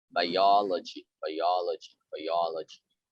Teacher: you have to stress the second syllable